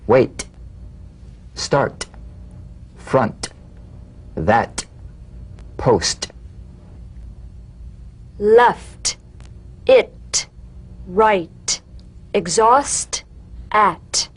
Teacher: unvoiced T tongue front palal stop consonant cognate to the D the same staccato springing action as the D drum beat with no voice forms the light tap of the T